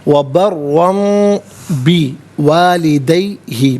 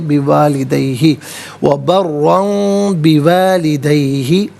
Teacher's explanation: دو زبر کی تنوین کے بعد با آ رہا ہے تو دو زبر کی تنوین کو میم سے چینج کر کے میم کی آواز کو غنّے کے ساتھ ادا کریں گے